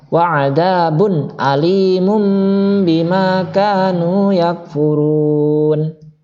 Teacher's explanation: Alimum sama-sama dua bibir bertemu, mim juga bertemu, ba juga bertemu. Tapi di situ secara penjelasan ba-nya diganti menjadi huruf mim juga. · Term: iklab